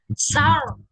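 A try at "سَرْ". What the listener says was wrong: Iya, jangan sor, jangan ngikut lagi bibirnya. Sar. Ini aja yang bergerak, dibukanya tetap sama tinggal lidahnya bergerak ro-nya. Sar ya. Bibirnya tidak bergerak. Jadi ucapkan dulu kemudian mensukunkan huruf ro-nya dengan mengarahkan ujung lidah tadi dan sedikit punggung lidah ke gusi atas. Ya, bukan dengan menebalkan huruf sebelumnya. Ya, bingung-bingung sar. Ya, jadi bukan saur.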